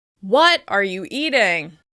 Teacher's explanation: If you were simply curious about the food on someone's plate, you would stress eating the most. By shifting the stress to what, you're expressing shock, surprise, or even disgust.